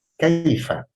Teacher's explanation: ya sukun sesudah fathah itu bunyinya ai, bukan ae. Jadi jangan disamakan membaca harful lin berupa ya sukun sesudah fathah seperti kita berbicara dengan teman atau lawan bicara kita.